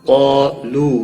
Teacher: واو مدہ ہے، ایک الف کے برابر کھینچ کر پڑھیں گے۔